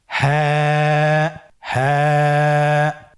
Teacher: হরফটি উচ্চারণের স্থান কণ্ঠনালীর শুরু হতে, অথবা আমরা যদি আরবিতে বলি হলকের শুরু হতে এই হরফটি উচ্চারিত হয়